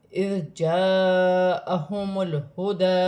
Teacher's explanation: جائے گا، اذ جاءہم الہدی، الف مدہ بھی بن رہا ہے، بڑی مد بھی ہے، مد متصل 6 الف کی مقدار تک کھینچ کر پڑھا جائے گا